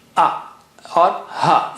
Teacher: From the same spot as A, from the lower part of the throat, A or Ha. In this case, this is Ha.